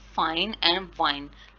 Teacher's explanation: इन the production of F एंड वी the air stream is restricted between the lower lip एंड the upper teeth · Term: लेबियोडेंटल फ्रिकेटिव्स